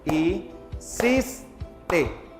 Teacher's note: ¿Dónde lleva la mayor fuerza de voz? En cis